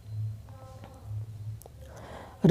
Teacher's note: वर्तस्य, लुंठित, सघोष, अल्पप्राण व्यंजन